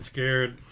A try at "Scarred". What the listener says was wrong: Scarred. It's scarred, people. It's not scared. Because it rhymes with hard. We die hard, not we die haired.